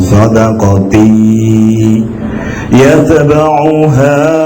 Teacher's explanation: Maka cara membacanya masuk ke dalam huruf ya dengan mendengung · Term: idgham bi gunnah